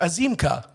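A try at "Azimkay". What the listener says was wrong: No, you add an A as in like AY. Azim K.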